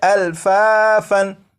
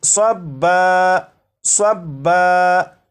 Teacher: جیسے یہاں پر آپ دیکھیں یہ جو لفظ ہے یہ ہے الفافن، یہاں پر فا کے اوپر دو زبر ہیں، تو جب یہاں پر وقف کریں گے تو دو زبر کو الف سے بدل دیں گے